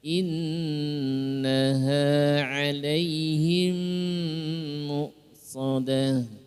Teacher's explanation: mim ketemu mim dibaca dengan idgham mimi. Idgham mimi. Ya, 'alaihim dengungkan di situ tahan 2 harokat muqsadah, bukan mu' tapi mu.